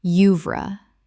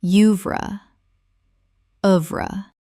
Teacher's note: 2 syllables in English. The OE makes a short U sound. Example: looking at the artist's complete oeuvre, you can trace a remarkable journey from her earliest experimental work to her mature masterpieces.